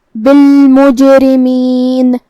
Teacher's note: قلقلہ کا معنی ہے کہ حرف ساکن کو ہلانا، لہذا ہم حرف الجیم کو ہلاتے ہوئے یہ کلمہ کو ادا کریں گے